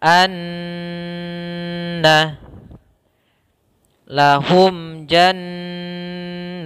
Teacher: Cara membacanya adalah suara an-nya kita tahan dua harokat. Anna, tidak langsung dibaca anna lahum, tapi tahan dulu. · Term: gunnah